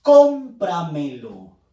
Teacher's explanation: la fuerza de voz está en la sílaba com